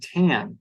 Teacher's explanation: has a long vowel because it ends in a voiced consonant, an N